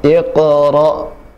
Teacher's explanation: Ada qalqalah, ada qalqalah, dipantulkan suaranya. Cara yang pertama adalah dengan memantulkan suaranya, ya.